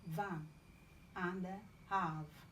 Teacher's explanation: V labiodental fricative, as in van and have